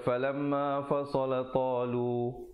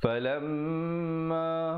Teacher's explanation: Yang betulnya falamma, mim bila bersabdu mestilah didengungkan. Hukumnya wajibul gunnah, wajib dengung kadar 2 harakat.